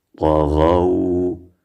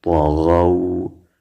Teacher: طا زبر طا غین واو زبر غو طغو. طا و غین په ډکه خولو و نرم ویلی شو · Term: حروف لین